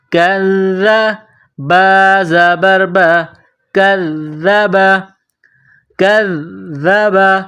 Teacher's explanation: تو ذال کے اوپر تشدید ہے، کاف اور ذال کو ملائیں گے تشدید کی وجہ سے، اور ذال میں سختی کریں گے